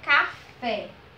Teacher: aquelas que a última sílaba é a sílaba tônica ou seja a última sílaba ela é a sílaba mais forte é aquela que a gente pronuncia com a força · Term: oxítonas